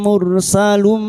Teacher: ra sukun yang didahului dhammah kita baca tafkim